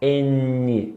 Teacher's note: eu encosto a língua no dente. Então, o N é língua dental.